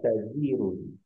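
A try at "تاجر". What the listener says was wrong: ta, tanya panjang. Tajirun.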